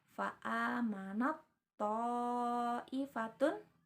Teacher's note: Huruf ta-nya itu dileburkan atau seolah-olah samar ya, seolah-olah hilang atau tidak ada